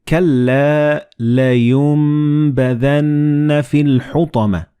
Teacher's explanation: And this meme appears in the middle of the word. So the noon and ba, when they follow one another in the same word, you don't pronounce noon, but you pronounce meme